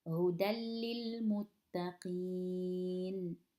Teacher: Lam is also part of yarmilun, one letter of the merging letters, so we have to apply the rule. So we're going like from the dal to the lam without any ghunna.